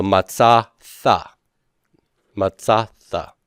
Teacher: Preceding vowel sounds blow out a dagesh lene.